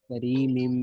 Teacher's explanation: تنوین کے بعد حروف یرملون میں سے میم آ رہا ہے، میم کو میم سے ادغام کیا جائے گا، اس کا ملایا جائے گا اور غنہ بھی کیا جائے گا